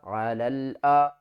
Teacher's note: لام زبر لل، علل، یا اور الف کو نہیں پڑھیں گے، لام کو دوسرے لام کے ساتھ ملا کر پڑھیں گے